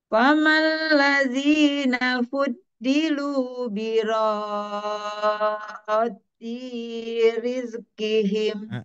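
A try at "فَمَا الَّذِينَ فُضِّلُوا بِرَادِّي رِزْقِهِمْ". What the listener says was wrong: D-nya kepanjangan, Bu. Birod di rizqihim sedikit.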